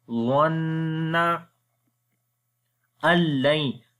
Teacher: After the Nun sakin, the next is lam, we make idgham without gunna.